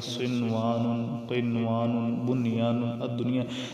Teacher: تو ان پر یہ جو 3-4 حروف ہیں یہ ان تمام قواعد سے مستثنیٰ ہیں، یعنی کہ ان پر یہ قاعدے نہیں لگتے، تو ان پر گنہ نہیں ہوگا، ان پر بلکہ اظہار ہی ہوگا